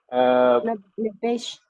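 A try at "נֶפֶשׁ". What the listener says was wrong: It is Pe, not Bet. Right? It is Pe, not Bet. And then it is Pe without Dagesh. So how will you pronounce? Nefesh.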